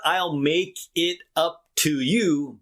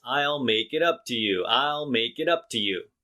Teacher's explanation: when the word two is in the middle it'll be shorter and sound like t and not two two is too long and it stops the rhythm of speech